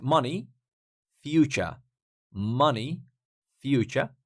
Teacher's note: they are same because stress is on the first syllable on both words